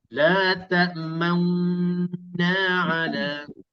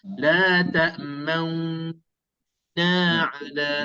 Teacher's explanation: Kita muncung mulut. Tapi cara pertama, kita dengung 2 harakat beserta dengan muncung mulut. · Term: ismam cara pertama